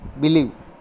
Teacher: believe has 2 syllables, be and live, but only the second syllable is stress.